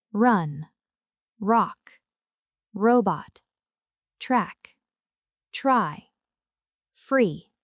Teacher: This is a voiced sound. The tongue is raised and slightly curled, without touching the roof of the mouth. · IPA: /r/